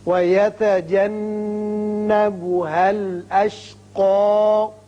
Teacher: یہاں نون مشدد ہے، غنہ کریں گے